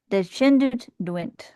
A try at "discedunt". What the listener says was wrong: Discedo. Discedo, sorry. Discedunt. Discedo. You're putting an N in there. Descendant. Like descended.